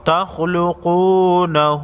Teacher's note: چوٹی مد کو 3 الف کے مقدار کھینچ کر پڑھیں گے